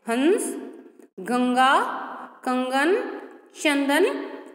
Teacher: मुख से ना निकल, कहाँ से निकल रही है? हमारी नासिका से निकल रही है, यानी कि हमारी नाक से निकल रही है।